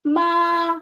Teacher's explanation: First tone above your head, ma, high.